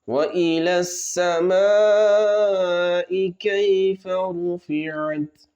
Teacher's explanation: यहाँ पर मद होगा, मद्दे मुत्तसिल, तो 3 अलिफ तक हम उसको खींच सकते हैं।